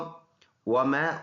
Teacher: واو ہونٹوں کے گول ہونے سے ادا ہوتا ہے